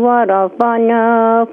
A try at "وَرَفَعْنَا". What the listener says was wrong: یہ درست کر لیں, وَرَفَعْنَا, عین ہے, وَرَفَعْنَا